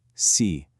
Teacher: Notice how my voice falls in pitch.